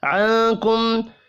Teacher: نون ساکن کے بعد کاف ہے، اخفاء حقیقی ہوگا